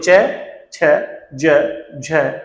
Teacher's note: जो च वर्ग है वो तालव्य है, यानी तालु को टच करते हुए जिह्वा बाहर आती है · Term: संघर्ष स्पर्शी